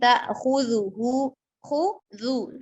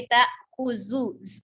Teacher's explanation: خذو ذال کو نرمی سے ادا کرنا ہے